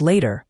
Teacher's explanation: in American English, the t often becomes that soft d sound